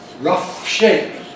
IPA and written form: ˈrʌf ˈʃeɪp (rough shape)